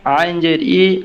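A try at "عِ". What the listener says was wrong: আইন জের ই, ই ওই যে ওই হায়ের মতনই হচ্ছে, মানে আইনটা উচ্চারণ হইতেছে কিন্তু হরকত গিয়া ওইটা থাকতেছে না। হ্যাঁ, ধীরে ধীরে আইন জবর আইন জের ই, আইন পেশ উ।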